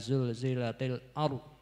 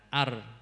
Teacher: padahal niku ada Ro tafhim dan Ro tarqik Jadi kalau yang ro yang dibaca tafhim itu itu sedikit memoncongkan bibir